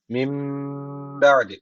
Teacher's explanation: zaman burada İklap tecv var demektir Ne yapacağız şöyle okuyacağız Yani bir miktar dudaktan tutuyoruz Mim diye dudağı kapatıyoruz bir Elif tutuyoruz sonra B diye açıyoruz